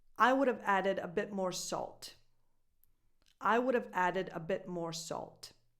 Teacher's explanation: in this case you pronounce the V because it gives you a smoother transition